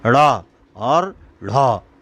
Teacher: ऐसा लगा कि जीभ उठी और एकदम नीचे गिर गई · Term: उत्क्षिप्त व्यंजन